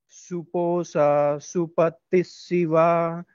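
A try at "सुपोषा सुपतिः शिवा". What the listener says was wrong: Suposha Posha it is not Posa Suposha Supati Shiva Suprajata Suviracha Suposha Supati Shiva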